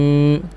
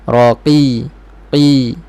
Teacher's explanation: Qi biar bunyi baris bawah betul-betul ai dan gerakkan bibir ke bawah.